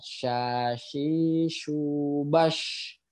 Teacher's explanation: Jadi tengah lidah bertemu langit-langit, terus ada aliran udara yang menyebar. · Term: tafashi